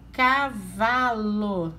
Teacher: A sílaba tônica, a sílaba mais forte é o vá. É a penúltima, reparem.